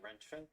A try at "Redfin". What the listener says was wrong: But you're saying Rentfin. It's Redfin. Okay, so the sound that your mouth is making? Is it red or rent?